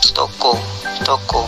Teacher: Vokal O. Vokal belakang, sedang atas, bundar, semi tertutup